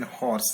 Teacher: h in horse is a voiceless glottal fricative